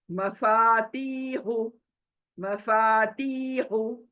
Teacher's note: मफा अलिफ मद्दा की वजह से खींचा